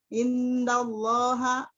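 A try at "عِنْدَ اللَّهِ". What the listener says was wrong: Indallahi, haknya diberi kasrah Bu, pakai pulpen Bu. Indallahi, nah ini haknya kasrah. Diberi kasrah. Karena dia ulang Bu ya.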